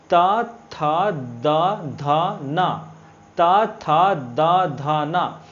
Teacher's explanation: और यहाँ त थ द ध न, त थ द ध न, मतलब हमारा जो तालु है, हमारा जीभ है, वो दांत, हमारा जो दंत है उसके स्पर्श के माध्यम से ये ध्वनि निकलता है